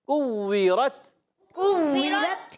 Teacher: کاف کا مخرج زبان کی جڑ اور تالو کا سخت حصہ. کوورت، کووی. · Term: کاف کو باریک